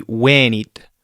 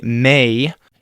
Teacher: The E in Latin makes the sound like hey, like A, except you don't change the shape of your mouth.